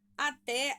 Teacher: Até, a sílaba tônica é o té.